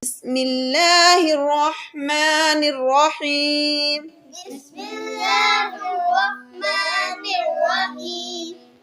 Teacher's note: یہاں بسم اللہ سین کی سیٹی ہے، میم کے نیچے زیر ہے اور لام کو ہم باریک پڑھیں گے۔